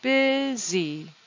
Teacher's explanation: Two syllables. The stress is on the first syllable, busy. What's odd about the word busy is that the U sounds like an I.